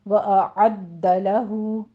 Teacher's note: آ اور آ یہ 2 ساؤنڈ الگ الگ سے ہیں، ایک ہے حمزہ آ، ایک ہے عین۔ عین کو وسط حلق میں سے ادا کرنا ہے آپ نے، اور دال کے اوپر تشدید ادا کرنی ہے۔